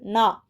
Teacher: நாவின் நுனி மேல்வாய் அன்னத்தின் நடுப்பகுதியை தொடுவதால் நகரம் பிறக்கிறது. நாக்கோட நுனி மேல்வாய் அன்னத்தோட நடு நா.